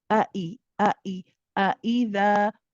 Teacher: You want both hamzas to be shiddah. This means they have a sharpness to them. A'i, a'i. You don't want to say a'i.